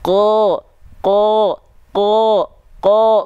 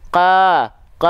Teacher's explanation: yang membedakan pangkal lidahnya naik ketika fathahnya